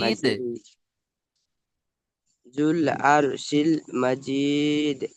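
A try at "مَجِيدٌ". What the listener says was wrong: মাশাআল্লাহ, মাশাআল্লাহ। চলেন, খুব সুন্দর পড়েছেন ভাই।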